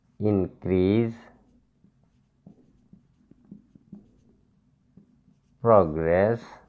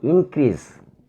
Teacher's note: Stress on the first syllable. When should we stress on the first syllable?